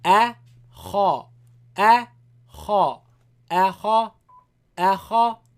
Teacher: Don't make both of them light or both of them heavy. Hamza is light. Kha is heavy.